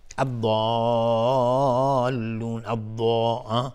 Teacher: اینجا مد لازم کلمه مثقل، مد لازم کلمه مثقل به مقدار 6 حرکت لازمه که مد داده بشه